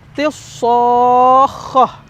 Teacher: tidak keluar si alif lamnya, L-nya tuh nggak keluar ya gitu. Jadi langsung masuk ke so, tilsokhah gitu ya. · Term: syamsiyah